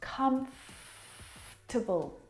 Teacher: this word just like vegetable has an extra vowel in there that we don't need to pronounce